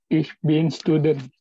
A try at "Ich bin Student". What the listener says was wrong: Ich bin Student. Ich bin Student. Bukan student. Kalau student itu Inggris, student. Jadi E-nya kayak Pepsodent. Ich bin Student.